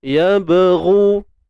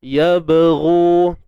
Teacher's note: Qalqalah sughra. Jadi sughra ni maksudnya kecil. Lantunan yang kecil. Dan boleh juga kita faham lantunan yang lemah.